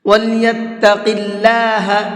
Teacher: اللہ کے لام سے پہلے زیر ہوتا ہے تو اللہ کے لام کو باریک کر کے پڑھتے ہیں۔ وَلْيَتَّقِ اللَّهَ اس طرح سے پڑھیں گے، وَلْيَتَّقِ اللَّهَ نہیں پڑھیں گے۔